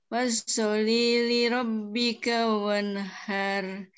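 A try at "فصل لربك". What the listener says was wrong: Secara umum sudah benar, tapi beberapa huruf masih perlu, termasuk tasdid ya. Tasdid itu murni double. Fasalli. Salli. Rabbika. Li rabbika.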